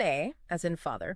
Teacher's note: To make it, you need the maximum openness of your mouth. It's the sound of the first cry.